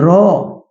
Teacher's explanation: জীবের অগ্রভাগ ওপরের তালুর সাথে স্পর্শ লেগে একটা কম্পিত হয় এবং সেই কম্পনের মধ্যে দিয়ে এই র বর্ণটা উচ্চারিত হয়। তাই এই বর্ণটাকে বলা হচ্ছে কম্পনজাত বর্ণ।